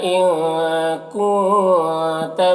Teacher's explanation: ان کے نون میں اخفا ہو رہا، کونتا کے نون میں بھی اخفا ہو رہا